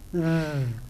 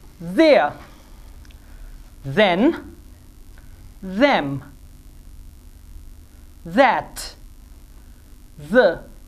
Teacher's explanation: TH sound, which is the voiced one. I mean, where you're going to do some vibration, and this will be pronounced like th.